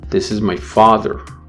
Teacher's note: the highest pitch will occur on the first syllable of father and the lowest on the second syllable of father, the last syllable in the sentence. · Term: intonation